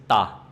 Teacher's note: Remember, don't make it aspirated like it's ta, not t.